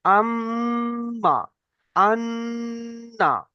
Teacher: আম্মা, আন্না, নাকের না। ভিতর থেকে একটু গুণনা করতে হবে যদি মিম এবং নুনের উপরে যদি তাসদিদ থাকে।